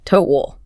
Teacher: Yeah, it's got that audiliu sound, like in cow or how. Toe, and then the ending is a dark L sound, like ooh.